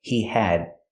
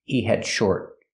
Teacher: We hear the D in had is a stop D.